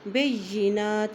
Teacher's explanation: مریم البینات، با کی زبر کو یا سے ملائیں گے، یا کے اوپر شد ہے، بینات، نون کے اوپر کھڑی زبر ہے، ایک حرکت لمبا پڑھیں گے